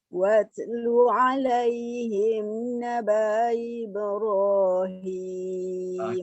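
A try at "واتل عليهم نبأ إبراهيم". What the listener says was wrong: Okey, cuba pastikan betul-betul hamzah yang pertama tu tak ganggu dia, tak usik dia. Clearkan bunyi naba'a. Clearkan. Naba'a. Sebab kita nak ubahnya hamzah kedua.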